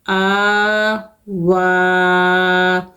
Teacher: یا لکھی ہوئی نظر آ رہی ہے لیکن یہ پڑھی نہیں جائے گی، تو آ اور وا دونوں کو ہم کھینچ کے پڑھیں گے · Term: کھڑی زبر